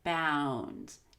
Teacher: a voiced consonant such as bound which ends in an ND I will still start with the short a and end with the long you